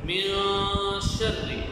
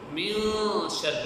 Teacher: اس میں جو زبان ہے اس کو اوپر تالو کے سر لگائیں گے اور آواز ناک میں جائے گی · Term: اخفاء